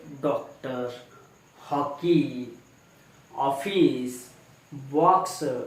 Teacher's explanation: अ का उच्चार आ और ओ के बीच का होता है